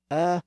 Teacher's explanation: can be pronounced in the front part of the mouth and this uh sound is produced more in the middle of the mouth